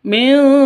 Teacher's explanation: atitum min zakatin min zakatin nun mati bertemu dengan Zain atau nun mati bertemu dengan Za samar didengungkan siap-siap ke huruf znya karena ini ikhfa Hakiki